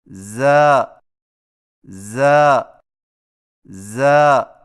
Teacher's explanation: زا کی ادائیگی میں زبان کی نوک کو ثنایا سفلی کے کناروں سے مضبوطی سے لگا کر باریک اور سیٹی جیسی آواز میں پڑھیں، یعنی ز ز ز۔